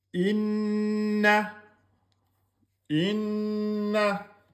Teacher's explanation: un noun avec shidda, vous devez faire deux temps.